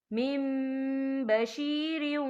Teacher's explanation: یا دیکھیں میم، یہاں نون ساکن ہے، نون ساکن کے بعد جو ہے با آ رہا ہے تو یہاں پر اقلاب ہوگا، یعنی تبدیلی ہوگی، ہم پچھلے میم کو اگلے میم کے ساتھ ملا کر پڑھیں گے اور ہم یہاں غنہ بھی کریں گے.